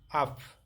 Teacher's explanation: বে যখন জার্মান শব্দের শেষে বসে তখন বে বাংলা পয়ের মতো উচ্চারিত হয়ে থাকে